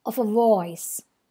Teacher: of a are both unstressed and voice is stressed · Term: anapest